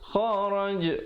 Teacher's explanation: ada pantulan di situ, jim, qalqalah